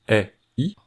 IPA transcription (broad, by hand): i